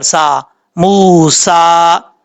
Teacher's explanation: میم کے بعد جو واو ہے یہ واو مدہ ہے، 1 الف کی مقدار لمبا کر کے پڑھا جائے گا. سین میں سیٹی آئے گی کیونکہ حروف صفیریہ میں سے ہے